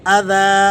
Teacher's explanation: جب ہم یہاں وقف کرتے ہیں تو وقف میں آپ جانتے ہیں کہ دو زبر کی تنوین یہ الف سے تبدیل ہو کے پڑھی جاتی ہے، ہم نے اسے اذى کھینچ کر پڑھنا ہوتا ہے ایک الف کے برابر